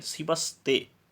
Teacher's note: शिवः का जो विसर्ग है वह ते के साथ जब जुड़ता है तो वह विसर्ग आगे त वर्ण, जो त वर्ग का प्रथम वर्ण है, उसके होने के कारण विसर्ग दंत्य स हो जाता है और दोनों मिलकर के बन जाएंगे शिवस्ते।